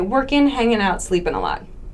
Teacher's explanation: So instead of working, hanging out, sleeping a lot, we'll drop that G sound